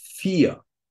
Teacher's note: the suffix er, at least in Germany, is pronounced like a vowel, like a dark R